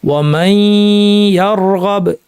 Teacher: মাই এইটুক নাক থাকবে, ইয়া বলার সময় নাক শেষ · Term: গুন্না সহ ইদগাম